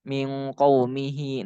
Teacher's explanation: hi-nya itu dibaca panjang. Kenapa dibaca panjang? Karena setelah hi itu ada huruf hidup. Sebelum hi juga huruf hidup. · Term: matsilah